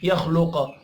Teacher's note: ऐ यख़्लुक़, ऐ गुन्ना होगा, यख़्लुक़ खा और क़ाफ पुर पढ़े जाएंगे